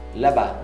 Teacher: Là-bas, não pronuncia o S.